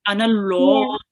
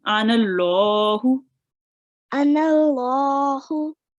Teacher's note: when there is a fatha before, you'll just make this lam a bit round.